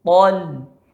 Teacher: Po tebal, lam setelahnya tipis.